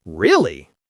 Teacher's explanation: really with a falling tone means confirmation or disappointment